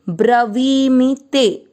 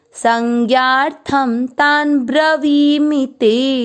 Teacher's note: वी की मात्रा बड़ी है ब्रवी मी की मात्रा छोटी